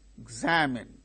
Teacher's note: In the word examine, the second syllable gains stress.